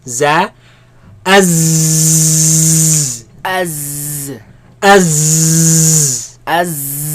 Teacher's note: There's a lot of commotion, a lot of air, a lot of movement of air between the tongue and the teeth.